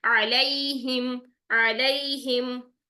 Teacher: अब यहाँ पर आ अगर आपका निकल आया है वस्त हल्क से, तो आइन को जबर के साथ अदा करना मुश्किल नहीं, इसको लंबा नहीं करना, 1 काउंट ही रखना है सिर्फ